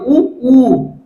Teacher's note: இதழ்களை குவிப்பதால் பிறக்கும் எழுத்துக்கள்